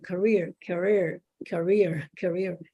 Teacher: No, it's k. The first syllable is just like a whisper, and you say it loudly in the second syllable